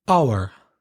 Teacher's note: the initial H is silent. And remember, with the article, you need the an before hour because the H is silent.